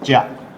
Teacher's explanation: So dia. So that dia, when we pronounce quickly become, ja. So that is called, ja is palatal sound, but that formally dental sound. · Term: palatalization